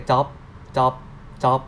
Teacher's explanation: You see that you say the sound like that in the final consonant, but if the Thai language they say job, job, job, just that. No final sound.